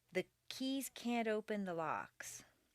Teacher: if you have trouble with can't before a word that starts with a vowel such as open put in a very small d